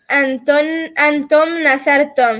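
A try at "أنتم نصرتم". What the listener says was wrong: Good catch. Very good.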